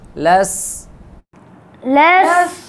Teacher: لام سین زبر لس، لام سین زبر لس، لس، لس، سین میں سیٹی ہے، صفیر ہے، صفت صفیر ہے اس میں